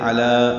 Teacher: اور واللہ علی کل شیء شہید، واو غلام اسم جلال سے ملائیں گے، پر پڑھیں گے. علی، لام باریک پڑھا جائے گا، عین وسط حلق سے ادا ہوگا، 2 حرکات لام کو لمبا کریں گے.